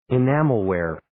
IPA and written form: ɪ'næməl,wer (Enamelware)